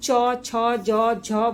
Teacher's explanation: जब हम च, छ, ज, झ बोलते हैं तो हमारी जीभ ऊपर तालु में जाती है। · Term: च वर्ग